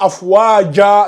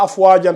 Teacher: Si on fait une pause, on remplace le tanwin bil fatha par le mad bil alif.